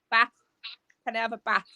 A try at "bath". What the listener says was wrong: No, you don't. You say it with your bottom lip. Don't lie to me. You go bath.